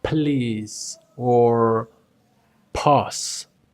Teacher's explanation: In English, you say like something like please or pause. Do you notice that puff of air? Well, in Spanish, we just don't make it.